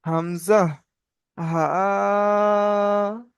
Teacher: কণ্ঠনালীর শুরু থেকে উচ্চারণ হয় হামজা, হা। যখন হামজা বলবেন তখন দেখেন এখানে নড়বে হামজা, হা।